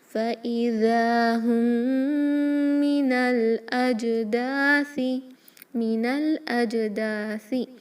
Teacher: میم ساکن کے بعد میم ہے، یہاں پر ہوگا ادغام شفوی. اوکے ٹو کاؤنٹ غنہ کریں · یہ جو نون ہے اس کو ملائیں گے الاجداثی کے لام سے. یہ جو حمزۃ الوصل ہے وہ نہیں پڑھا جائے گا